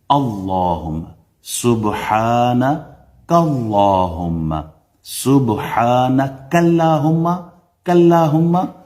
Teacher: اللہ کے نام سے پہلے، اسم جلالہ سے پہلے پیش آ جائے یا زبر آ جائے تو آپ اللہ کا جو نام ہے یہ پر پڑھتے ہیں، فل ماؤتھ، تفخیم